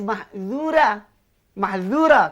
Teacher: Kalau huruf zal bolehlah bunyi tipis.